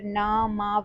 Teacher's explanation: इनके उच्चारण में श्वास वायु नाक से होकर निकलती है। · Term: नासिक्य